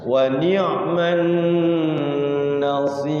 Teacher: Nun tasydid gunnah, digunakan dulu, jangan buru-buru. Wa ni'man nasir, jangan begitu, tapi tahan dulu sejenak ya, 2 ketukan atau 3 ketukan.